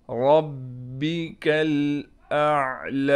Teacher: ربک الاعلی، یہاں پر را کو ہم نے موٹا کر کے پڑھنا ہے۔ با پر تشدید ہونے کی وجہ سے تھوڑا ٹھہراؤ کریں گے۔ اس کاف کو باریک کر کے کاف کو ڈائریکٹ اسلام سے ہم ملا دیں گے۔